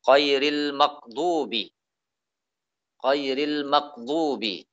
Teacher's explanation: yaitu mencampur suara ghain itu dengan qaf